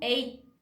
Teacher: os norte-americanos eles meio que quase não pronunciam esse T do final, é meio que um T mudo, é quase que um eight a.